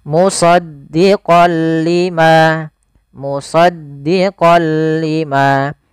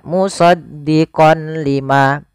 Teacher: memasukkan apa suara nunnya kepada huruf lam tapi tidak boleh disertai dengan gunah